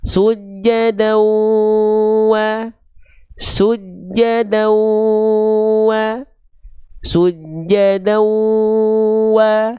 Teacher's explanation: tinggal dimasukkan ke hidung suaranya disengaukan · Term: dengung